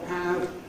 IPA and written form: hæv (have)